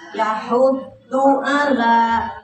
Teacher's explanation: Nah, du-nya pendek, langsung ke huruf depannya.